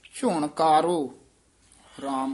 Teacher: ਝੁਣ ਘਾਰੋ ਨਹੀਂ ਕਹਿ ਦੇਣਾ ਘਾ ਲਾ ਕੇ ਝੁਣ ਕਾਰੋ ਰਾਮ ਕਕਾ ਉਚਾਰਨ ਕਰਨਾ